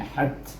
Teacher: ha huruf hamas, ta pun hamas juga, jadi bunyi hat